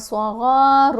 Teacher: غین کے اوپر زبر ہے ساتھ الف، تو الف بھی ساتھ موٹا ہی پڑھا جائے گا